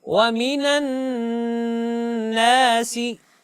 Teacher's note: کیونکہ نون مشدد ہے. جی نون کے اوپر شد ہے، اس وجہ سے اس میں غنہ کرنا ہے